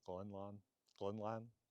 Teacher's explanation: So Grønland or Grønland is how I would normally say that in Norwegian. Danish, the R is that more uvular R of French or German, as it is in some Norwegian dialects too.